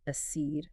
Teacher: So that second syllable stress, that seed